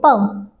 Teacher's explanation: जब हम प बोलते हैं प, तो जो हमारे होठ हैं ये आपस में एक दूसरे से टच करते हैं, ऐसे स्पर्श करते हैं। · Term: ओष्ठ